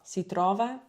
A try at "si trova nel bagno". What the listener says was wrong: Ok, quindi quella A non ridurla perché hai detto si trova La tendenza di chi parla inglese è di ridurre le vocali non accentate facendole diventare schwa o schwa.